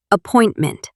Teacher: when I say appointment, I stress the second syllable. Appointment.